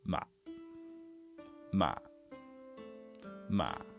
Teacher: Really low, really short, and kind of croaky. That's why we call this one the zombie tone.